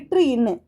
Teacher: இப்ப இற்று இன்னு அப்படின்னு சொல்லும்போது மேல்வாயை நாக்கின் நுனி நல்லா டச் பண்ணுது